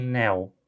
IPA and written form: nɛw (now)